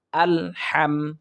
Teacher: আমরা এখানে ভুল পড়ে থাকি আল হাম বলি আল হাম বলি অর্থাৎ হা হচ্ছে হলকের মধ্য থেকে উচ্চারিত হবে আমরা সেখান থেকে উচ্চারণ করার চেষ্টা করব হা মিম জবর হাম